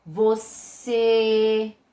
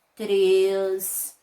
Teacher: Também aparece aí o acento circunflexo, que dá para a sílaba tônica um som mais fechado, fica um sonzinho mais abafado.